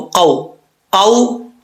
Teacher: واو لین کا مطلب لمبا نہیں کرنا، تو اس کو ہم لمبا نہیں کریں گے